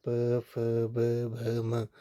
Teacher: दोनों ओठों से जिन वर्णों का उच्चारण हो रहा है उन्हें ओष्ट्या कहा जाता है · ओष्ठ से यानी कि दोनों ओठों से जिनका उच्चारण होता है प फ ब भ म, तो ये आपका ओष्ठ्य हो गया।